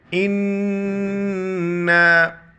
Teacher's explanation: نون پر جو ہے شد ہے، تشدید ہے تو غنہ کریں گے